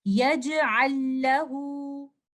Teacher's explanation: The word yaj'al is followed by letter lam. We will merge the Saakin lam into the second lam. We will do idgham kamil. The sound that you hear is from the second lam